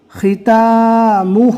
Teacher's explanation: آپ دیکھ سکتے ہیں یہاں پر میم پر پیش ہے اور ہا پر الٹا پیش ہے. ہا کو کھینچا گیا ایک الف کے برابر اور میم کے پیش کو نارمل پڑھا گیا بغیر کھینچے